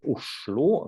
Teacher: They have this weird word intonation, like that they sing in one word, they say Oslo, like it goes down and then up, at least in one central dialect.